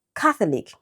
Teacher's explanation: Catholic, stress on the first syllable.